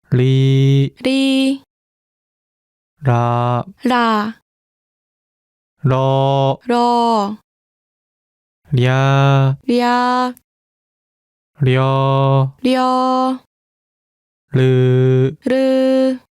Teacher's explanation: Its pronunciation falls somewhere between the English L and R. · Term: 리을